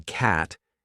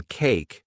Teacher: the a sound in cat is short and sharp while in cake it's long and soft